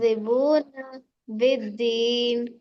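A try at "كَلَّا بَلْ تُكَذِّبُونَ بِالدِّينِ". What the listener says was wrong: پھر وہی چیز کھینچ دیا نہیں، پھر ایک مرتبہ صحیح سے کلا بل تکذبون بالدین.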